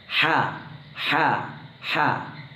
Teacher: തൊണ്ടയുടെ മധ്യഭാഗത്തുനിന്നാണ് ഹ എന്ന അക്ഷരം പുറപ്പെടുന്നത് നമ്മൾ ഹ് എന്ന ശബ്ദം ഉണ്ടാക്കാറുണ്ടല്ലോ അതേ ശബ്ദത്തോടുകൂടി പുറപ്പെടുന്നതാണ് ഹ കുറച്ച് പ്രാക്ടീസ്